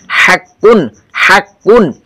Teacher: হাটা একটু গলা চাপিয়ে আসবে